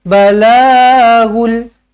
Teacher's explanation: Balaghul, la panjang, ada alif kecil, 2 harakat mat asli.